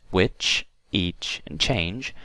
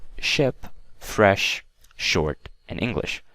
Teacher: the difference between CH and SH is that T that we pronounced before that sh sound